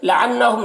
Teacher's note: نون مشدد غنہ کے ساتھ میں پڑھیں گے، کھڑا زبر اسے ایک الف کے برابر کھینچیں گے.